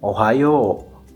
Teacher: Kansai dialect is characterized or easily recognized by the falling intonation and the accented second to the last syllable of a word or expression